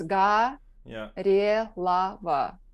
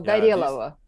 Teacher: the accent is on the middle syllable, and O phonetically becomes A.